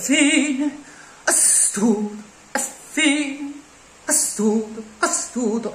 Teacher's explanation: la e aperta prende più spazio e più tempo quindi la riduci a shva favorendo peraltro il raddoppiamento fonosintattico